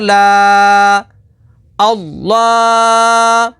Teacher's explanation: کھڑی حرکات کو حروف مدہ کی طرح ایک الف یعنی 2 حرکات کے برابر کھینچ کر پڑھیں گے